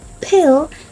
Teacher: For instance, p in pill is aspirated